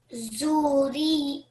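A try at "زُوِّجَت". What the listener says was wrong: This letter here, what's this letter? Wow. You read it as the ra. So try again for me.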